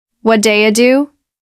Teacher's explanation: The what do you part blends together to sound like wa.